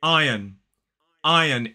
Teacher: in a modern British RP accent we do not pronounce that sound we do not pronounce the r there is a silent R